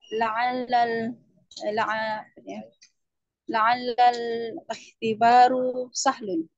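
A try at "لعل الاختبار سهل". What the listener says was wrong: La'alla al-ikhtibar. Jangan ikhtibaru tapi La'alla al-ikhtibar. La'alla al-ikhtibar.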